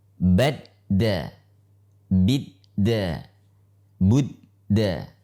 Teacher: dal tidak memiliki sifat hentakan nafas yang kita sebut dengan nama hams.